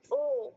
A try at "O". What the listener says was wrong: এটা কিন্তু ও না, এটা হচ্ছে ও। এটা হচ্ছে ও। ও ডাব্লিউ একসাথে হলে যেরকম উচ্চারণ হয়, ইটস লাইক ও।